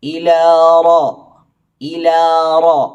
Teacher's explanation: റാ തഫ്ഹീം ആക്കി ഉച്ചരിക്കണം റ എന്ന് വായ ഓപ്പൺ ചെയ്തു പറയാതെ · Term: റാ തഫ്ഖീമാക്കി